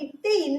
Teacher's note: நாவின் நுனி அன்னத்தின் நுனியை பொருந்துவதால் பிறக்கிறது. அன்னத்தின் நுனி இங்க இருக்கு, நாவோட நுனி இங்க இருக்கு.